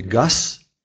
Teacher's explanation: ряд согласный звук звук за обозначается на письме буквой z и по такому же принципу как и другие польские звонкие согласные оглушаются если стоит в конце слова